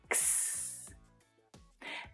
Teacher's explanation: The k sound is produced right at the back of the throat, while the s sound is made with the tongue and the teeth · The letter X usually produces a sound that has 2 consonant sounds pushed together, k and s. which is what makes this sound difficult.